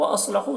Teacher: सौद को पुर पढ़ेंगे, हुर्फ मुस्तारिया में से है।